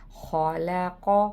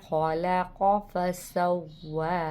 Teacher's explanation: الذی، دال نرمی سے پڑھنا ہے، الذی خلق، خلق، خا کی آواز حلق سے نکلے گی، حلق کے اوپری حصے سے، اور قاف کو موٹا کر کے پڑھنا ہے